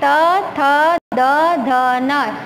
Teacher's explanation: त थ द ध न, इसमें आपकी जीभ दांतों के बीच में आ रही है।